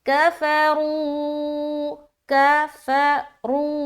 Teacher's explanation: اب یہاں پر دیکھیں کاف کو جلد ادا کر رہے ہیں زبر کے ساتھ، فا کو بھی جلد ادا کر رہے ہیں. را کو واو کے ساتھ ملاتے ہوئے ہم کھینچ رہے ہیں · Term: مد